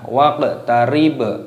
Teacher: qafnya berharokat sukun, ini dimatikan, dipantulkan suaranya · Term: qalqalah